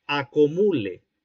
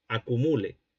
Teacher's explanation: el escribano prefirió o empleó la semicerrada posterior en lugar de la cerrada posterior. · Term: vacilación